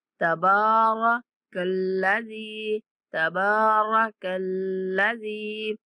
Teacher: با کو اور زال کو ایک سیکنڈ تک لمبا کر کے پڑھیں گے